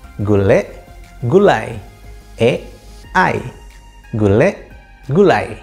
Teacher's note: Kata gule pada silabel terakhir terdapat vokal e yang kemudian ditransformasi atau diubah menjadi diftong ai. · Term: diftongisasi